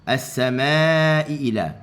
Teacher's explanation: kita baca dengan mad muttasil panjangnya empat harakah sahaja